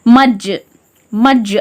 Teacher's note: கல்கலா செஞ்சு இருமுறைகள் அசைச்சி அதட்டி ஓதுற மாதிரி ஓதுறோம்